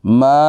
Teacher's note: मीम के बाद, मीम को लंबा एक अलिफ की मिकदार करेंगे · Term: अलिफ मद्दा